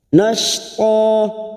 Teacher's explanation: Nash huruf shin sukun nashta fathah tanwin fathatain yang diwaqafkan selain tak marbuto panjangnya 2 harokat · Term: mad iwad